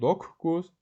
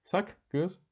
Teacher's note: Qoşa c, q cingiltili olduğu üçün özünün kar qarşılığı k-ya çevriləcək. Doqquz yazılır, doqquz deyilir.